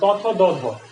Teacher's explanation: এরপরে দেখো ত, থ, দ, ধ, এগুলো হচ্ছে দাঁতের সাহায্যে উচ্চারিত হয়। জিহ্বাটা দাঁতের সাথে যায় স্পর্শ করে, এই জন্য এগুলাকে আমরা বলি দন্তধ্বনি